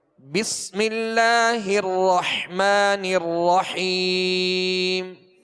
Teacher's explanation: हा को वस्ते हलक से पढ़ेंगे · 2 حا ہیں، رحمن الرحیم، حا کو وسط حلق سے پڑھیں گے